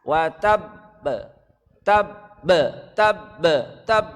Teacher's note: Ini qalqalah kubra ditahan kemudian dipantulkan.